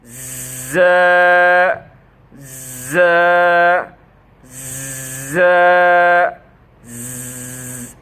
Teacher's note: এই বড় দাঁতের নিচের দাঁত দুইটা এর নিচের আগার সহিত লাগাইয়া, জিহ্বার আগা সামনের নিচের দুই দাঁতের সহিত লাগাইয়া উপরের দাঁতের সহিত হালকা সম্পর্ক রাখিয়া শীষ দিয়া কম্পনের সহিত শীষ দিয়া আদায় হবে